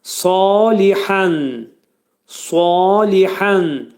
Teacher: Bax bu kəlmədə sa qalın hərfdir. Demək dil kökdən yuxarı qaldırılacaq. Dolu sad hərfini deyəcəyik. · hə boğaz həsidir. Boğazın ortasından çıxarılır.